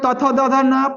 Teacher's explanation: पांचवा अक्षर नासिका से बोला जा रहा है नासिका के साथ साथ दंत से बोला जाता है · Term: पंचमाक्षर